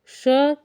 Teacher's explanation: तो यह है तालव्य ध्वनि तालू से जो है इसका उच्चारण स्थान होता है